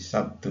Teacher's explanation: Sabtu itu kan harusnya kan pakai huruf B, tapi kemudian dalam pengucapannya menjadi P. Jadi Sabtu itu, peristiwa ini disebut dengan asimilasi.